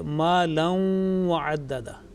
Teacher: Is assimilation with long nasal sound